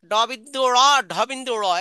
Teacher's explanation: সাত নাম্বার উচ্চারণস্থ হচ্ছে জিহ্বা দিয়ে দাঁতের মাড়িতে আঘাত করে দুইটি বর্ণ উচ্চারিত হয় · জিহ্বা দিয়ে দাঁতের মাড়িতে আঘাত করে 2টি বর্ণ উচ্চারিত হয়, ড বিন্দু র, ঢ বিন্দু র, এই জন্য এই দুটিকে তারণজাত বর্ণ বলে।